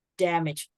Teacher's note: When you talk about the noun, you stress the first part.